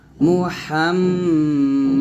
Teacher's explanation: মিমকে ধরে গুণনা করবেন